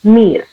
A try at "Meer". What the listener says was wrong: Meer. This is A sound, no? This is not E sound. This is A. Okay, A sound. Meer. So now we see that our mind is still trying to read English language.